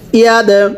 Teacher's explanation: দালে সাকিন কলকলা করে পড়তে হবে